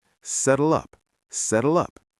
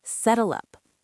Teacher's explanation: Native speakers often link these two words together. We do not say settle, pause, up. We push them together.